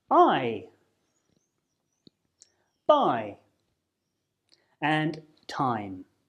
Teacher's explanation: is because they are a combination of two vowel sounds so as you say the I sound your mouth will start on a position of the a sound and then it will close a little and your lips will become more stretched out as you finish on the position of the I or e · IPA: aɪ